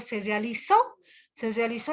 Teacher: hay una mayor entonación sobre todo en esa parte de de la última sílaba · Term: palabras agudas